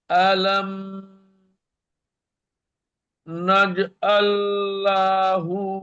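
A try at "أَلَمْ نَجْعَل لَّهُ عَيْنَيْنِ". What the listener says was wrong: লা টান হয়ে গেল। আলাম নাজআল লাহু আইনাইন।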